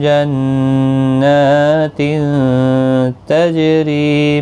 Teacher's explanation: جنات تجری، ری یا مدہ ہے، ایک الف کی مقدار کے برابر کھینچیں گے، اور جیم ساکن پر قلقلہ بھی ہوگا۔